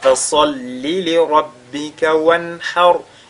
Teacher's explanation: Le ra sur lequel on s'arrête est précédé par al-fatha, il est donc avec at-tafkhim.